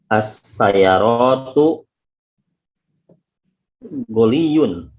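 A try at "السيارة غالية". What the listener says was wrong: As-sayyaratu, banyak pendeknya perbaiki dulu. Ghaliyun atau ghaliyun gitu mungkin maksudnya ya. Ghaliyun. Ghaliyun. Mahal berarti as-sayyaratu mu'annath.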